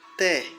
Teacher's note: A sílaba forte é té, é oxítona.